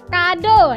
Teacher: O yang biasa O ini posisinya itu madia atas belakang dengan posisi mulut semi tertutup.